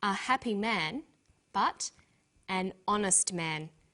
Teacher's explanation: the H is not pronounced so honest sounds like it starts with a vow and where